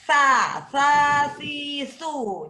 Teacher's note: ingat sa-nya itu harus digigit di ujung lidah, di ujung gigi lidahnya. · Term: S tipis